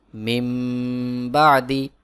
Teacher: বাদি এখানে দেখুন নুন সাকিন এর পরে ইকলাবের হরফ বা রয়েছে এখানে ইকলাব গুন্না হবে অর্থাৎ নুন সাকিন কে বাদ দিয়ে ছোট্ট মিম দিয়ে বদল করে পড়তে হবে